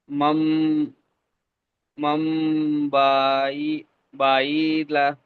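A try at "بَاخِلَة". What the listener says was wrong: বাখিলা, খ আছে, লক্ষ্য করেন।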